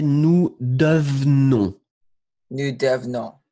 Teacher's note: Et en fait, le deuxième E, il va presque disparaître.